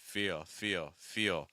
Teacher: you can hear the vowel, you can hear the shift on the dark L.